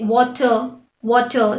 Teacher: the letter r fortunately is never silent in english language however in the british accent the letter r is often silent